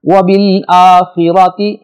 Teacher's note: را پر زبر ہے، اس کو ہم موٹا پڑھیں گے